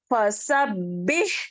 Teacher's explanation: اب یہاں پر ہا ہے ہمس ہوتا ہے